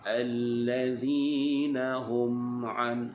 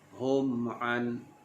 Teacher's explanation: Dibaca dengan izhar syafawi. Izhar syafawi artinya bacaannya kita jelaskan bunyi mim dengan merapatkan bibir.